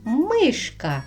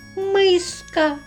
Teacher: ми змінили звук ш на [музика] с